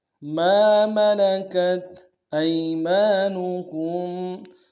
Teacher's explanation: حمزہ کو یا کے سامنے لانا ہے، یا لین بغیر کھینچے پڑیں گے، میم کے ساتھ الف مدہ ہے ایک مقدار میں کھینچیں گے، نون کو نون سے ادا کریں گے، کاف کو میم ساکن کے سامنے لانا ہے، میم ساکن میں غنہ کریں گے۔